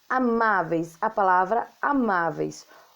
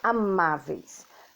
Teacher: lá no finalzinho a gente tem um encontro do é com i amáveis então a gente está falando de um ditongo o encontro